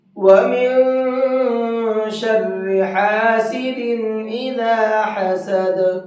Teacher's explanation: حسد کے دال میں قلقلہ بھی کریں گے